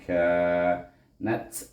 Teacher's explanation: Ka bertemu dengan alif sebelum alif baris di atas, maka kita baca dengan mad asli 2 harakat